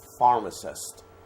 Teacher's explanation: two letters pH makes the effort sound so you say pharmacist you put your upper teeth on your lower lip and you say pharmacist